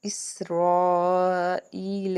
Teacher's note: اسے مد متصل کہتے ہیں کیونکہ اسی کلمہ میں حمزہ آ رہا ہے، اس کو بڑی مد کہتے ہیں، اور یہ 3 سے 5 الف کے برابر اس کو ہم کھینچ کے ادا کر سکتے ہیں۔ اور یا ساکن سے پیچھے زیر ہونے کی وجہ سے یہاں پہ بھی ہم ایک الف کے برابر کھینچیں گے۔